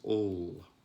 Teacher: you see the back of the tongue being raised towards that soft palate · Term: dark l